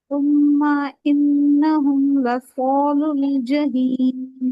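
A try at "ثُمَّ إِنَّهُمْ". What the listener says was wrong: तुम माँ में ना ऐसे यहाँ ऊपर नहीं, ज्यादा लंबा नहीं करे, जल्दी छोड़े इसको। तुम इन्नहुम।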